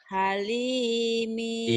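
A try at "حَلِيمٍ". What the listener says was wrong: Iya, Ibu masih berpikir ini alif ya, karena ini bukan alif. Yang bisa nyambung kanan kiri ini lam. Dan ini ada barisnya. Halimi yang panjangnya lamnya, hanya pendek. Halimi.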